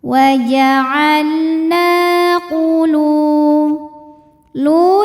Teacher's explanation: Sebab ada waw sukun didahului baris dhammah, maka huruf lam panjang 2 harokat. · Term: mad tabi'i zahiri